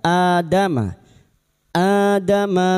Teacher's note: bertemunya hamzah dengan mad badal. Dua harakat kita panjangkan. Adama adama min dzuhurihim.